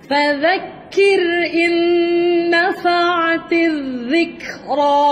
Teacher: ذال hujung lidah keluar di antara gigi atas dan bawah.